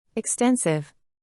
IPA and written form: ɪkˈstɛn.sɪv (Extensive)